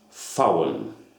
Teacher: It is pronounced VAUEN with a V without a voice, like an F.